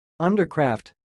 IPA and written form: ʌndərkræft (Undercraft)